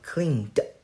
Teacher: CLEAN, so voiced. So the ED will be d